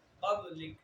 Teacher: قاف پھر خود حروف مستعلیہ میں سے ہے، لہذا قاف کو موٹا پڑھا جائے گا. با حروف قلقلہ میں سے ہے اور با جب حروف قلقلہ ساکن ہو تو قلقلہ خوب ظاہر ہوتا ہے، لہذا قب قب کر کے پڑھنا ہے، کب نہیں پڑھنا، قب کر کے پڑھنا ہے، ٹھیک ہے.